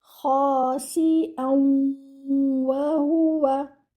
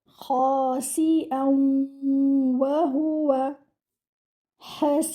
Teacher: But if we continue, what do? We will merge the noon sakina, which is hidden in this tanween, into the waw, and we will do idgham over here.